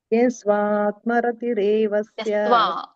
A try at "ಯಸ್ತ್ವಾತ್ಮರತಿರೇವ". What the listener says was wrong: ಯಸ್ತ್ವಾತ್ ಸ ತ ಒತ್ತು ವ ಒತ್ತೆರಡು ಇದೆಯಲ್ಲ ಮಾತಾಜಿ.